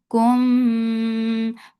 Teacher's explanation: Kum for dhamma circle lips and there is idgham shafawi. So keep the sound in your nose for a longer time. Kum ma 2 counts long.